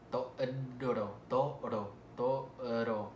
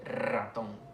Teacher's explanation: La R, toro, toro, toro. Hay que hacer siempre una vibración, igual con la vibrante múltiple, ratón.